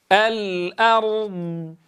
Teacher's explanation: الإتيان بصفة الاستطالة للضاد